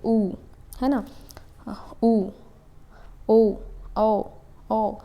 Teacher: हमारा लिप्स क्या हो रहा है एक वृत्त जैसा स्ट्रक्चर बनाता है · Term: वृत मुखी